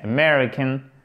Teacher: American accent tonique sur la seconde syllabe